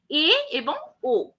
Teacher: উচ্চর থেকে নিচে, নিম্ন মধ্যর থেকে একটু উপরে, অর্থাৎ জিভ কিছুটা উপর নিচের একদম মাঝখানে জায়গায় অবস্থান করে, সেই জায়গাটাকে বলা হয় উচ্চ মধ্য স্বরধ্বনি